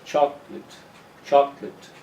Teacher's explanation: the late becomes lit